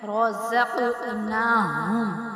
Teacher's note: اب قاف پہ جو ہے نا وہ قلقلہ کریں گے،